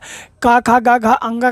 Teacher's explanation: क ख ग घ अङ का स्थान कंठ होता है